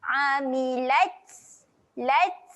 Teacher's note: huruf ta ketika mati sifatnya adalah keluar. Keluarkan angin.